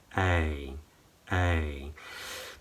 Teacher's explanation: wide lips, tongue is high and forward, and it actually becomes further forward in the second part of the diphthong.